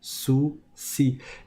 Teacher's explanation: la langue elle va être en face des dents du bas de sorte à laisser passer l'air au-dessus d'elle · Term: sin